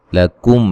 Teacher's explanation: मीम साकिन का इज़हार गुन्ना नहीं करेंगे